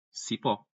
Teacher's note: tem a tonicidade na última sílaba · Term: oxítona